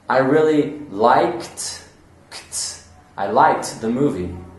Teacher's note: So you're not even going to hear the ED sound. It's a very quick T sound.